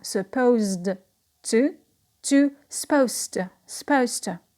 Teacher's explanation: So the z will become s because we have t. Before t, the z is pronounced s. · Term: regressive assimilation